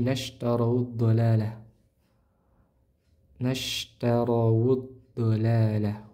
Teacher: Huruf dod dia memiliki sifat namanya istitalah. Istithalah ini memanjangkan lidah di dalam mulut. yang mana ciri atau sifat tersebut hanya dimiliki oleh huruf dad.